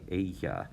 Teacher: the double l kind of sounds like a y